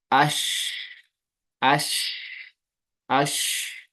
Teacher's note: تو اس کی آواز پھیل جاتی ہے پورے منہ میں، اس لیے اس میں صفت تفشی پائی جاتی ہے، سپریڈ ہو جاتی ہے اس کی آواز پورے کو، پھیل جاتی ہے، تو اس میں صفت تفشی پائی جاتی ہے، یہ شین حرف میں پائی جاتی ہے، ٹھیک ہے۔